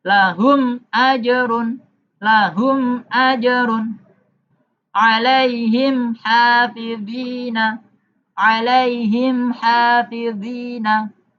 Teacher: Cara membacanya mim sukunya dibaca jelas, tidak ada dengung, tidak ada samar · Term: izhar syafawi, idhar syafawi